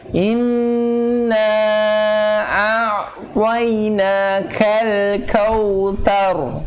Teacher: Ujungnya u. Kau bukan o.